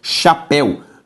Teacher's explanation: ditongo aberto el, em posição oxítona